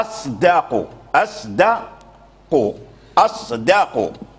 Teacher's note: لابد من ترقيق الدال والا فاللسان يعني يميل الى ان يفخم الدال ان يفخم الدال فيصبح قريبا من من الضاد قريبا من لان